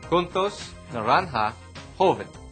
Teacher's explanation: J always sounds like the spitty, guttural G.